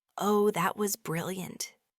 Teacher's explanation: said with a completely flat voice, and perhaps a small eye roll after someone makes a big mistake, it clearly means sarcasm.